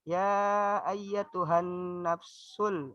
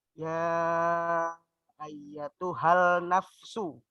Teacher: alif lamnya tidak usah dibaca, langsung dimasukkan ke huruf nun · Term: alif lam syamsiah